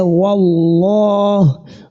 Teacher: the lam ta'arif has been assimilated into the second lam, which the rule that we can identify here, whenever lam ta'arif has been assimilated, that is a lam shamsiyya, and then that the rule that is governing it is what is known as idgham. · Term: idgham lam shamsiyya